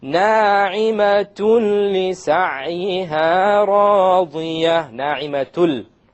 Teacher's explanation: Okay, because there's a tanween followed by a la. So we have the merging, the idgham, but we have it without ghunna.